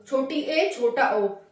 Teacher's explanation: ऐसे स्वर जिनके उच्चारण में आधा मुंह बंद रहता है उन्हीं को हम अर्ध समृत स्वर कहते हैं, जैसे कि छोटी ए और छोटा ओ।